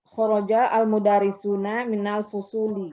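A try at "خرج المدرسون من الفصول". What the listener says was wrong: Hakada.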